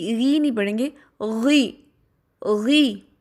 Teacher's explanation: غی میں بھی جو زبان کی روٹ ہے اس کو اٹھا کے پڑھیں گے، اس کو باریک نہیں پڑھیں گے.